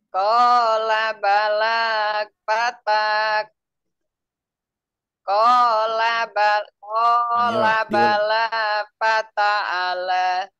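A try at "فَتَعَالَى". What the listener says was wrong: A-nya, Bu. A-nya dibaca panjang tidak? Fathah bertemu alif.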